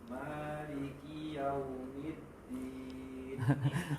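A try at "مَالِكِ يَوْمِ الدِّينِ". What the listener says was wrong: Terpanjangkan mim, kasrah mim ketika menyambung ke dal yang bertasydid.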